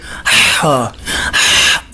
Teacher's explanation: اسے آپ ہا جو ہے حلق کے درمیانی حصے سے نکالیں گے، ہا، ایسے ٹھنڈی سانس بھر کے، جیسے بندہ دوڑتا دوڑتا جو ہے وہ تھک جاتا ہے اور سانس پھولنا شروع ہو جاتا ہے تو بندہ ایسے کرتا ہے، ہا۔